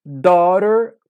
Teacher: esse ó vai ser um o mais aberto mais seco